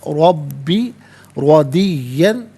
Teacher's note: रॉ पर ज़बर, रॉ को पुर करके पढ़ेंगे, या मुशद्दद, जमाओं के साथ पढ़ा जाएगा